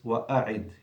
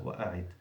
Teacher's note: now we come to a strong hamza, what's hamzat al-qat'i, and you have to pronounce it always, wa'a'id. You see, clear hamza, wa'a'id.